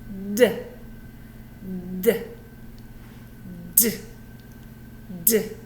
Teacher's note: if I make the D sound though I have to turn my voice on · So to make a D sound, put your tongue up, let that little burst of air through, but turn on your voice.